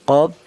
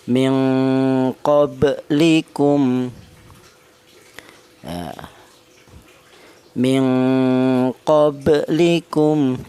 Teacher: Alasannya huruf qalqalah yang mati tidak berupa wakaf alias matinya ini asli sukunnya asli maka dia dibaca qalqalah. Cara bacanya huruf qalqalah yang ba sukun ini dipantulkan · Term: qalqalah sughro